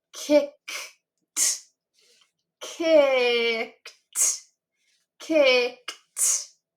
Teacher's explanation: I don't feel a vibration with that k sound at the end. So, it's not going to make the id sound and it's not going to make the d sound. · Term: t sound